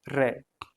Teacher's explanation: जब इसका उच्चारण करते हैं तो वायु लुढ़कती हुई सी बाहर निकलती हुई प्रतीत होती है इसलिए इनको प्रकंपित या लुंठित व्यंजन कहते हैं।